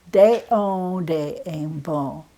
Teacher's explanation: You've got the nasal sound, but you don't say the N sound. You just do the nasal sound.